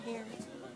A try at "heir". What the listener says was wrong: Heir? Because you said hair. H-E-I-R, an heir. H-E-I-R. Heir. The H is silent.